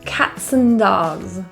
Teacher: The word and is often reduced to just a quick N sound.